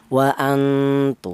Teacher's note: Untuk yang kali ini ikhfanya ini ikfa a'la yaitu ikala itu artinya samar lebih dominan daripada dengungnya · ini lebih dominan samarnya daripada dengungnya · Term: ikhfa a'la